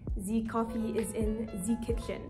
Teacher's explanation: the French and German exaggerated accent in which the interdental fricative is over corrected